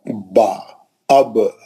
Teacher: होठ का आधा हिस्सा जो बाहर रहता वो सूखा रहता। ब जो है होठों के गीले हिस्से को लगाने से है ना निकलता है